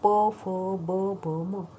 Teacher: आमचं उच्चारण करताना ओष्ठो सम्मिलित. ओठ एकत्रित मिटतात. सम्मिलित म्हणजे मिटतात. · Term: ओष्ठ्या